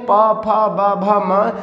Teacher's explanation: ये ओष्ठ के द्वारा उच्चरित किए जाते हैं, इसीलिए इन्हें ओष्ठ व्यंजन के नाम से भी जानते हैं।